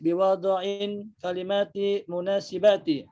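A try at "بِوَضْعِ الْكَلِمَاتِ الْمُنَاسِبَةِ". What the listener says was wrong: Dibaca semua tanwinnya. Karena kan tidak ada alif lamnya di situ. Kalimatin munasibatin.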